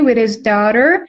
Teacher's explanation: You can drop the H in the word his.